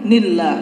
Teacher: ini merupakan lafzul jalalah yang tarqiq tipis.